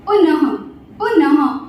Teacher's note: जब अह की मात्रा बोलेंगे तो लिटिल बिट साउंड ह का आएगा। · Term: विसर्ग की मात्रा